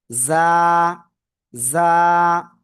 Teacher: জিব্বার আগা, সামনের নিচে দুই দাঁতের পেট ও আগার সাথে লাগাবেন, লাগিয়ে আপনার জাস্ট এক আলিফ টেনে উচ্চারণ করতে হবে।